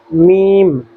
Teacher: جب آخری آواز میم کی نکلتی ہے تھوڑی سی ناک سے نکلتی ہے